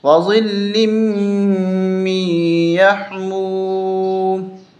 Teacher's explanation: جب وقف کریں گے تو وظل من یحموم، یہ دونوں زیریں ختم ہو جائیں گی، میم ساکن ہو جائے گا۔ میم پہ ہم اس کو سائلنٹ میں لے جائیں گے۔